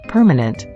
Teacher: we say the middle syllable ma with a very little stress on it thus the sound of the a in ma is a weak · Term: weak sound